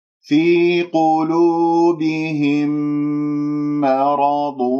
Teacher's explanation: القاف مفخمة مرتبة ثالثة لأنها مضمومة، وكل حروف قلوبهم مرققة إلا القاف